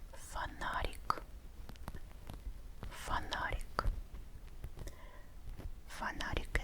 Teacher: НА is the stressed syllable.